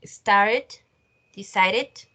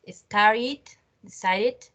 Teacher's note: no va a sonar ni con D ni con T, sino como con una id.